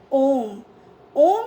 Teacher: प्लुत स्वर स्वर के उच्चारण में दीर्घ स्वर से भी अधिक समय